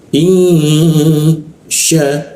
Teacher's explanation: Jadi ing ya ing di sini dengungnya di sini ing. Kita tahan dengungnya dua ketukan in sya ketika dibaca sya ini ada alif ee panjang.